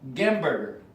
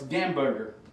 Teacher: They don't have H, so they just say G.